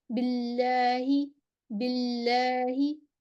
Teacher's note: جلالہ کے دونوں لام باریک پڑھے جائیں گے کیونکہ اس سے پہلے کسرہ ہے. باللہ، باللہ، اس کو بھی ہم موٹا نہیں پڑھیں گے.